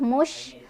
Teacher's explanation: Shinnya punya sifat tafashi, artinya nyebarin angin ya